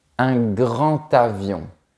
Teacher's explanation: Remarque bien qu'ici, on prononce la lettre D comme un T. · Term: liaison